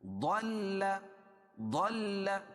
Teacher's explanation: ضاد کو موٹا بھی پڑھیں گے، اور ضاد کو لام میں ملائیں گے، اور لام کو پھر الحال پڑھیں گے، اکیلے پڑھیں گے.